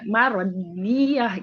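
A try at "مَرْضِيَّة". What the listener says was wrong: Jangan dicepetin. Marodiyah, marodi.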